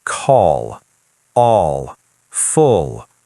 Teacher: Yes, your tongue tip still touches the same place, but the back of your tongue drops slightly. Oh, that changes the sound. It creates a deeper, heavier L sound.